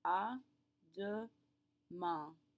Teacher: That AIN at the end is all one great big nasal sound again.